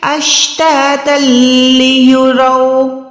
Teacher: اچھا اس کے بعد یہ جو ہے اشتاتا لیروا، تا دو زبر ہے، اس کے بعد لام پہ شد ہے، تو ہم نے یہاں پر دو زبر کو ادا نہیں کرنا بلکہ ادغام کرنا ہے بغیر گننے والا. گننا نہیں ہوگا تو نون کی آواز نہیں آئے گی، ڈائریکٹ تا کو لام کے ساتھ ملا کے ادا کریں گے